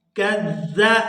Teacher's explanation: یہاں زال کو نرمی کے ساتھ ادا کریں گے۔ یہ زال مشدد تو ہے لیکن نرمی کے ساتھ ہی ادا کیا جائے گا، اس کے مخرج سے اس کو صحیح طور پر ادا کریں گے۔